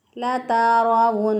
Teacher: हमने एक अलिफ के बराबर नाक में आवाज़ नून की ठहरा कर फिर हमने अदा किया इसको। तो हमने इसको पढ़ा ला तारावुन्नहा। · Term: गुन्ना